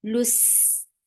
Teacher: Lil, loose, for dhamma circular lips attached with seen. Seen will get sifa of rafawa. Loose, and there will be safir, loose, and then fatha is very short.